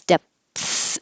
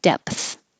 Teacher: You close your lips, depth, and then don't make a P. Just go immediately to the TH.